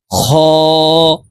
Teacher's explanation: খ হলুকের শেষ থেকে খ হরফের উচ্চারণ করতে হবে